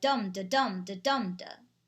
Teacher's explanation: trochaic trimeter sounds like dum de dum de dum de it has three trochaic feet · It has 3 trochaic feet.